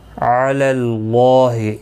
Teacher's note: علی اللہ، یہاں پر دیکھیں اللہ کا لام اس زبر کی وجہ سے پر پڑھا جائے گا